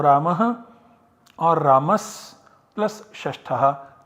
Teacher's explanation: So the Visarga can be substituted optionally by sa, and so we have both these outputs.